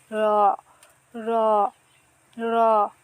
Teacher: উচ্চারণ হবে জিহ্বার আগার উল্টা পিঠ তার বরাবর উপরের তালুর সাথে লাগিয়ে